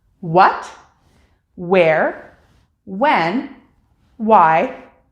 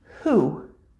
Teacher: we actually drop the W sound entirely and pronounce it with a H sound instead